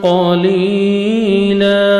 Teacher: क़ाफ को अपने मोटा करके पढ़ना है। या मद्दा 1 सेकंड आपने लाम को खींचना है, स्टॉप करेंगे।